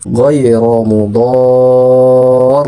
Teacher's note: Ditahan saja dengan tasdidnya namun tidak ada dengung di dalamnya. Hanya dibaca sebagaimana hukum mad lazim mukhaffaf kalimi.